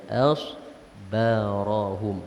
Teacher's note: Sad itu ditebalkan. Hamzah itu yang sebelumnya ataupun alif yang sebelum sad itu jangan ditebalkan. Nipiskan saja.